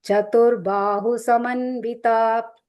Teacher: the ba is long, hu is short.